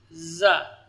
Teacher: Itu makhrajnya sama dengan makhraj sin. Jadi gigi seri atas dan bawahnya rapat. Kemudian posisi lidah di gigi bawah. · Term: huruf safir wusta